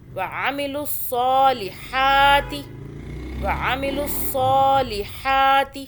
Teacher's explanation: عین کو حلق سے، صاد کو صو پڑھنا ہے، سین کی آواز میں نہیں پڑھنا